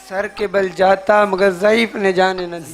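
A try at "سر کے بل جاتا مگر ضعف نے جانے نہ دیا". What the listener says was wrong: ضعیف نہیں ہے یہاں، ضعف نے جانے نہ دیا. ضعیف وہ ہوتا ہے جو ضعف والا ہوتا ہے، کمزور ہوتا ہے.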